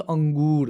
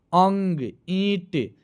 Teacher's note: अनुस्वार, टाइपिंग में मिस्टेक हो गया है, इसकी ध्वनि नाक से निकलती है। अनुस्वार की जो ध्वनि है नाक से निकलती है